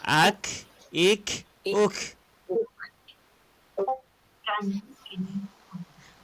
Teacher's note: Puan, dia mesti berangin sedikit. Huruf yang ada angin ujung ni ada dua. Huruf kaf dengan ta.